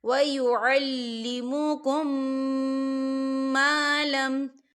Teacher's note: میم ساکن کے بعد میم آ رہا ہے تو یہاں پر ادغام میں شفوی ہو رہا ہے، تو ہم یہاں غنہ کریں گے